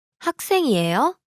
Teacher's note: here the question is formed by the rising intonation